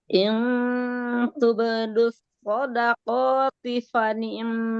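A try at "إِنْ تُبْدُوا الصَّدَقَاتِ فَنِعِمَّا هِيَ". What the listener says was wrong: Jangan kepanjangan, 2 harokat ya. Fani'immahi. In tubdu shadaqati fani'immahi.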